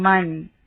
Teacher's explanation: جیسے میم زبر نون ساکن من، نون ساکن ہے اور آگے حمزہ ہے، حروف حلقی میں سے حمزہ ہا عین ہا غین خا، یہ حروف حلقی کہلاتے ہیں۔ نون ساکن کے بعد حمزہ ہے اور من نون کو ظاہر کر کے پڑھیں گے · قرآن مجید میں جب بھی جزم والے نون اور تنوین کے بعد حروف حلقی آتے ہیں تو صرف یہاں نون کو ظاہر کر کے پڑھا جاتا ہے، یعنی غنہ نہیں کیا جاتا۔ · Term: اظہار